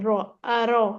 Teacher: वो कहते हैं रॉ को पुर कर दें आप। रॉ मोटी पढ़नी है